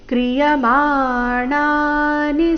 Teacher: ಮಾಣಾ ಎರಡು ದೀರ್ಘ ನಿ ರಸ್ವ